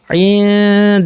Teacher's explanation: আনতুম বলার সময় জিব্বা দাঁতের গোড়ায় রাখবো, উপর দাঁতের গোড়ায়, যেখানে তায়ের মাখরাজ।